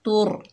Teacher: इलैही, ता के ऊपर पेश, आगे रॉ साकिन है, ता को रॉ से मिलाएंगे, रॉ पुर पड़ी जाएगी